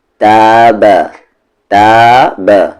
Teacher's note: تا کو کھینچیں گے، با کو بالکل بھی نہیں